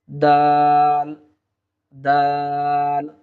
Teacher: জিহুব্বার আগাটা উপরের দাঁতের গোড়ার সঙ্গে লাগিয়ে দিলেই আমরা দাল হরফটি পেয়ে যাব